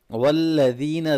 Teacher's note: ذال کو نرمی سے پڑھنا ہے، یا مدہ ہے اس کو لمبا کریں